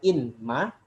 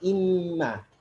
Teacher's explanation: Jadi tidak ada nunnya lagi, langsung diidgham pada mim bertasydid.